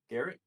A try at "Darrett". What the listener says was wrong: Darrett. Darrett. With a D. Darrett. Darrett. the Dare Lion, but not near as druggy.